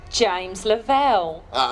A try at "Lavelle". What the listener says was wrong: Should have put more on the love. The love, Lavelle. Yeah, say it again.